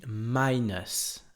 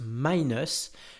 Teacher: Minus, ça s'écrit M-I-N-U-S, ça s'écrit minus si on devait le prononcer à la française, mais ça se prononce minus comme si ça s'écrivait E-U-S si vous préférez, minus, avec l'accentuation qui se fait sur la première syllabe